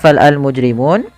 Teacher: alif lam yang dia dibaca dengan jelas suara lamnya dan dia ada tanda di atas huruf lam tanda seperti ini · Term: alif lam qamariah